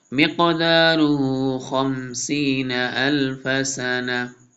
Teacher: قاف ساکن ہے، حروف قلقلہ میں سے، اس لیے موٹا بھی پڑھیں گے، قلقلہ بھی کریں گے۔